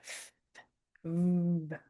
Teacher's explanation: It's a labial dental, so we know the teeth are on the lip. All right, so that's your lips and your teeth.